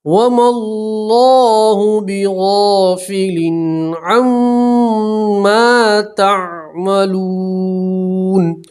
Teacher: نون کے اوپر وقف کریں گے تو زبر ہے تو جزم پڑھیں گے